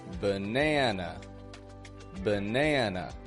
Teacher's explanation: this word has two schwas the first a and the final a